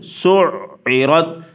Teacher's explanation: سین کو عین کے ساتھ سختی کے ساتھ ملایا جائے گا